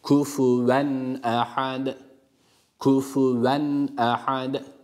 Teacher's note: dikkat etmemiz gereken birincisi ha harfi bunu H olarak okumaktan kaçınıyor bu harf H değil ha boğaz harfi olan ha harfidir